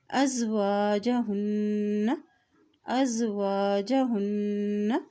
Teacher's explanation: हा के ऊपर भी जज़म है अयंकिहना अयंकिहना अज़वाजहुन्ना, हमज़ा ज़बर ज़ाल अस वा ज़बर अलिफ वा अज़वा जीम ज़बर जा अज़वाजा, हा की पेश को नून के साथ मिलाएंगे। नून के ऊपर शद है तो यहाँ पर गुन्ना भी अदा किया जाएगा